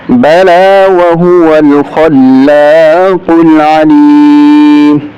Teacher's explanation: खा को मोटा करेंगे और काफ को भी मोटा करेंगे।